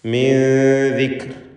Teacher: സാക്കിനത്ത് അനൂനിനെ ഇഖ്ഫാ ഹഖീഖി നൽകി മറച്ചു മണിക്കണം. ദാലിന് മുമ്പിൽ വന്നതുകൊണ്ട് തർക്കീഖോട് കൂടിയുള്ള മണിക്കലാണ് വേണ്ടത്.